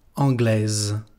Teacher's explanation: aquí es la forma femenina, la parte final se pronuncia z, anglaise.